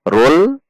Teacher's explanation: seperti lam saja makhrajnya atau posisi lidahnya rul. Hanya saja karena tafhim, maka dinaikkan pangkal lidahnya. Sehingga menjadi jika dilambatkan adalah rul.